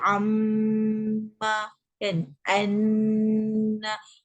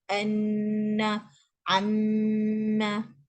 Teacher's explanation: kalau mim yang bertanda sabdu dia akan menjadi dengung yang paling kuat.